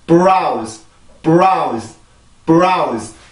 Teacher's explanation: 여기에서는 강해질 이유가 없단 말이에요. 그러면 아주 짧게 B 발음을 해주고 나서 바로 R 발음으로 넘어가 줘야 돼요.